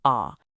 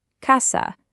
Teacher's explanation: The sound is just a really clean, open ah.